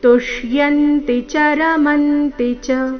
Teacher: ಕೊನೆಯ ಚರಣದಲ್ಲಿ ಗಮನಿಸಿ ಎಲ್ಲಾ ಅಕ್ಷರಗಳು ರಸ್ವ ಆದಕಾರಣ ಮಧ್ಯದಲ್ಲಿ ಯಾವುದೇ ಅಕ್ಷರದ ಮೇಲೆ ದೀರ್ಘಕಾಲದವರೆಗೂ ನಿಲ್ಲಬಾರದು ತುಷ್ಯಂತಿ ಚಿತಿ ಯಾವುದೇ ಅಕ್ಷರ ದೀರ್ಘ ಮಾಡಬಾರದು ತುಷ್ಯಂತಿಚ ರಮಂತಿಚ ಎಲ್ಲ ಅಕ್ಷರಗಳು ರಸ್ವ